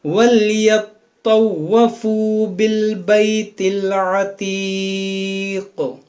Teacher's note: دیکھیں یہاں طوا مشدد ہے، واو مشدد ہے، دونوں کو پڑھیں دو بار